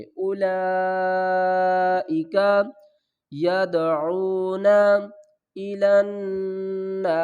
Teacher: اولا بڑی مد ہے 5 الف کی مقدار کھینچ کر پڑھیں گے, واو کو نہیں پڑھیں گے.